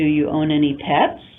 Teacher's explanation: We're using rising intonation because we're using the grammar pattern of the yes-no question.